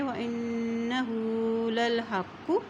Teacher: اب یہاں دیکھیں الف کی زبر کو نون سے ملاتے ہوئے پڑھیں گے، نون کے اوپر شد ہے، اور جب نون کے اوپر شد آ جاتی ہے تو وہاں پر غنہ ادا کیا جاتا ہے. اور ہا کے پر الٹا پیش ہے، اس کو ایک حرکت لمبا پڑھیں گے. وَإِنَّهُ لَلْحَقُّ، لام زبر لام لل، کیونکہ لام کی زبر کو اسلام کے ساتھ ملائیں گے، اس کے اوپر جزم ہے.